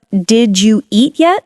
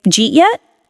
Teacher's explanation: Did you becomes jeet.